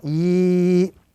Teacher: the combination is ya sakin, before which there is a kasra, the vowel kasra, would give us the prolonged sound e, and it must be prolonged to the duration of 1 to 2 seconds. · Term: ya madda